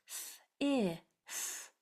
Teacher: We're putting our tongue between our teeth and blowing on this TH